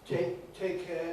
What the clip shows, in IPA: ˈteɪk ˈeə